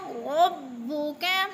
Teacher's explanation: را کو پر پڑھیں گے، کاف باریک